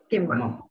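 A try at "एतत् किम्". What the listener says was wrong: Kimma no. Kim. Halanda.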